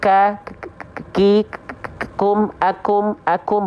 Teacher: Kaf punya berbagai macam sifat salah satunya adalah hams Hanya berupa percikan-percikan nafas